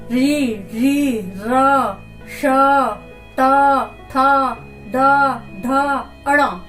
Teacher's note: जीभ मुड़कर इन वर्णों को बोलती है तो हमारा ये मूर्धन्य स्थान हो जाता है। मूर्धा से बोलने जाने वाला मूर्धन्य स्थान।